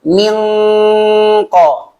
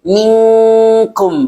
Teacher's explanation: kalau qaf sama kaf itu maksimalkan eng. Misalnya kalau qaf bedanya tebal, mingko.